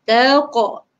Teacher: Apabila mati, maka kita kena lantunkan bunyinya. Dia akan bunyi taqa, bunyi qalqalah.